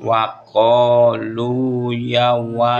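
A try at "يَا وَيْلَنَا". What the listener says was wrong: Ya, bukan yau tapi yawai bukan yau.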